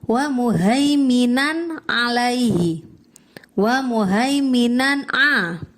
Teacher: Di situ dibaca izhar karena fathah tanwin bertemu dengan ain